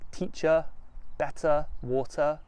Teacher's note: don't pronounce the r's at the end of words like teacher better water